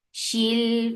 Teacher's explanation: Shil for kasra give e sound attached with lam. Lam will get sifa of tawassut.